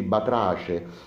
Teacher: la c inter vocalica batrace che troppo spesso viene confusa quasi con una sc